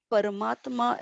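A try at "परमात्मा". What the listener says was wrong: careful, not param, but if you analyze the sandhi, Parama, very important to get the sandhi right.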